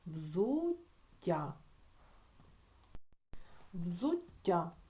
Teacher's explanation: в кінці Ми чуємо подовжений приголосний звук